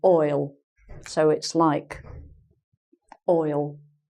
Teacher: to give you a few examples from the Birmingham accent so in Birmingham if you say I'll I'll be there they actually they change the vowel sound and they say oil